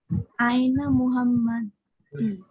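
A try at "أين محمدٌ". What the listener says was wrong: এন্ডিংটা একটু পরিষ্কার করে বলবা, এন্ডিংটাই আমি শুনতে চাই আসলে। মোহাম্মদি, মোহাম্মদি কেন? দি মানে আমি আসলে জানতে চাচ্ছি জের কেন ব্যবহার করলাম। আইনা মোহাম্মদু, ওকে।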